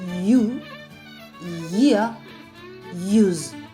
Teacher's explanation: The Y sound or the palatal approximant.